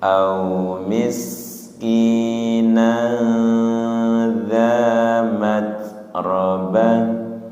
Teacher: sin sukun tahan dan tidak mantul ya.